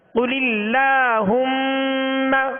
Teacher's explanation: قل اللہم، قاف کو پر پڑھیں گے. قل اللہم، میم پر کیا کریں گے؟ غنہ کریں گے، اس لیے کہ میم مشدد ہے